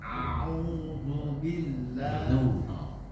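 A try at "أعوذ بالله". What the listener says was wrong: Masih kurang tipis. Zada. Keluarkan lidahnya.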